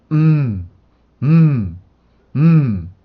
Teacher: M 발음은 그 양 입술을 막아서 코를 울려주는 비강음입니다. 그래서 양순 비강이라고 발음을 해요. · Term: 양순 비강음